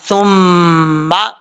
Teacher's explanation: میم مشدد کا غنہ ہوگا، ایک الف کی مقدار غنہ کر کے پڑھیں گے۔ سا جو ہے اس کا مخرج ہے زبان کا سرا اوپر والے دانتوں کے اندرونی کنارے سے لگے تو سا پڑھا جاتا ہے، بغیر سیٹی کے پڑھیں گے، اس کو سیٹی کے ساتھ پڑھنے کی ضرورت نہیں ہے۔